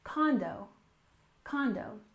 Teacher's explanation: we stressed the first syllable condo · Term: stress the first syllable